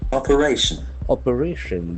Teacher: the accent falls on the third syllable